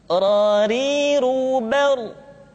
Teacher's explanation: Diucapkan dengan menyentuhkan punggung lidah dengan langit-langit. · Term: huruf ra